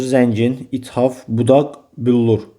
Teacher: bütün hamısında vurğu ikinci hecanın üzərinə düşdüyü